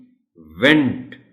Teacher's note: अगर हम अपने दांतों को नीचे वाले होंठों पर रख के ये जो शुरू की बिगिनिंग साउंड है वो पैदा करेंगे तो वो V की साउंड निकलेगी